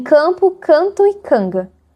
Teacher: Em campo, canto e canga, a consoante nasal se adapta ao ponto de articulação da consoante seguinte. Nesse contexto, a gente a distinção entre M e N se neutraliza e podemos representá-la como o arquifonema N.